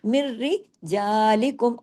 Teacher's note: मिरर जा और रा बारीक भी है रा डबल भी है इदगाम हो रहा है बिला गुना कोई गुना नहीं है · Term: इदगाम ताम बिलन गुना